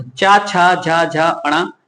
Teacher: तो कंठ से पूछा जाए, कंठ से कौन से व्यंजन बोले जाते हैं, का, खा, गा, घा और ण। और चा वाले हैं तो ये तालु से बोले जाते हैं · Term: चा वर्ग